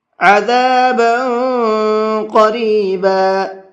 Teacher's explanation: عذابا کے با کے اندر بھی اخفا کر کے پڑھیں گے، اس لیے کہ اوپر تنوین ہے اور تنوین کے بعد میں آگے قاف آ رہا ہے، اور قاف بھی اخفا کے حرف میں سے ہے، اس لیے یہاں پر اخفا کر کے پڑھیں گے۔